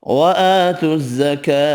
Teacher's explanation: الزکاة کاف بھی کھڑا زبر کی وجہ سے ایک الف کی مقدار میں کھینچ کر پڑھیں گے، ہا ساکن پڑھنا ہے وف کی صورت میں۔